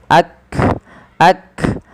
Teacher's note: Yang pertama adalah syiddah, tertahannya suara, dan hamas, dia mengadanya nafas kita. Maka ketika melafalkan huruf kaf ini, yang langkah pertama adalah tahan suaranya, barulah alirkan nafas.